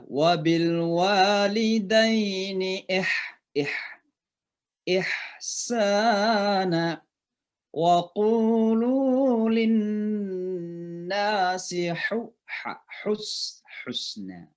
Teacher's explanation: ain dengan ha dua-duanya dari tengah tenggorokan kita. Namanya halqa. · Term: huruf halq